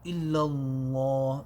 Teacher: That lam will be full mouth.